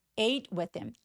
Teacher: ate라고 a 이중 모음으로 길게 소리 내 주세요